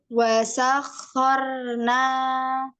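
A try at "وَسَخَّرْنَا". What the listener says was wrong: Iya, roknya wasakhorona koro koro masih di atas Kak. Iya, jadi pas huruf nun itu gerakannya langsung 2 kali, itu 2 kali 2 step ya Kak. Ininya ujungnya itu maju ke arah rongga mulut ya, pangkal lidahnya turun, pangkal lidahnya rebah lagi gitu.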